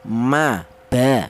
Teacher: Kita bilang ba, kita bilang ma itu melibatkan bibir atas dan bawah. Rapat dulu ma ba seperti itu.